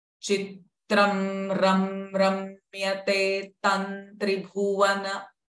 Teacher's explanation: Now here, the tam sound, the anuswara is followed by tra. Hence, the anuswara sound will become na.